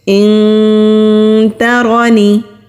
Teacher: اخفا جب ہم کرتے ہیں تو زبان کو ہم اپنی ہی جگہ پر رکھتے ہیں، یعنی کہ نیچے ہی رکھتے ہیں، نہ کہیں ہم اس کو سائیڈوں پر لگائیں گے، نہ کہیں اوپر ٹچ کریں گے، لیکن نون کی آواز کو 2 سیکنڈ کے لیے ناک میں چھپا کر رکھیں گے · را کے اوپر زبر ہے تو را کو موٹا پڑھیں گے، نون کے نیچے زیر ہے تو نون کو کھینچیں گے نہیں۔